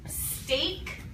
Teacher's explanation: steak sounds different it has long a instead of long o